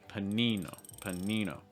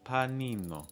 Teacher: that first syllable is really fast and that second syllable is held longer